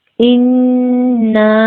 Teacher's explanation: نون مشدد ہے. نون کی آواز کو ناک میں 2 حرکت ٹھہرائیں گے، غنہ کریں گے. نون کی حرکت کو 2 حرکت کھینچیں گے.